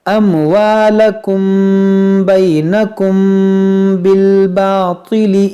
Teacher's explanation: یہاں میم ساکن کے بعد با ہے تو یہاں پر اخفاء شفوی کریں گے، یعنی غنہ کریں گے